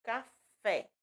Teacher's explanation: Exemplo de sílaba tônica com acento agudo, café. Fé, sílaba tônica, que é a que é pronunciada com mais intensidade e tem um acento agudo